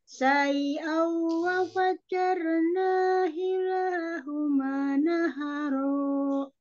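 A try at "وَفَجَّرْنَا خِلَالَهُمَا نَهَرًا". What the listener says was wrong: khilah di diperjelas lagi kho-nya khilahuma naharo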